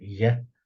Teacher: there's a very slight zh mixed with the Y